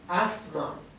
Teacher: Yo creo por lo que siempre he escuchado que la s no se pronuncia